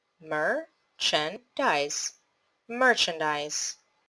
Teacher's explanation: The stressed syllable is on mer.